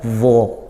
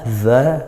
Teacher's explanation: bedanya D dibaca tebal kalau dza tipis